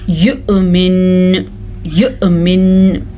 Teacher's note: نون یا میم پہ شد ہو اور وقف آ جائے تو پھر تھوڑا سا خاص قسم کا وقف ہوتا ہے، تھوڑا غننے والا وقف ہوتا ہے